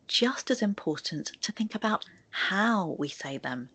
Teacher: I stress the word how because my main point here is the way that we're speaking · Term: sentence stress